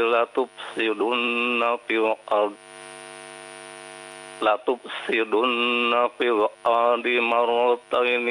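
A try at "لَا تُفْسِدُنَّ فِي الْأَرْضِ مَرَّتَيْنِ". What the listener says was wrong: Tasydidnya pada huruf ra, ya.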